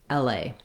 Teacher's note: And then A is the A diphthong. In LA, we stress on the A, so the L is kind of shorter and the A is longer. It has some secondary stress on L because I do have a clear vowel there as well, LA.